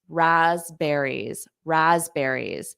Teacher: notice that P is not pronounced rasberries raspberries and there's more of a z Raz Raz raspberries